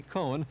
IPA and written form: koʊn (Cohn)